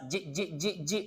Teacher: Jim. Tengah-tengah lidah. Dia langgar langit atas. Jik. Itu tempat keluar jim.